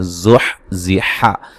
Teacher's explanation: زا کو سیٹی کے ساتھ زور سے ادا کریں گے